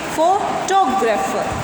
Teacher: तो फोटोग्राफर जब हमारा हो जाएगा तो इस वर्ड को हम डिवाइड करेंगे फोटोग्राफर। अब इसमें जो हमारा स्ट्रेस है वो फो पर ना होकर टो पर आ जाएगा, तो हम इसको बोलेंगे फोटोग्राफर।